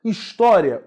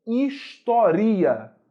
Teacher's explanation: o i é semivogal porque ele não traz a sua máxima intensidade de pronúncia se fosse a máxima intensidade pronúncia a palavra não seria história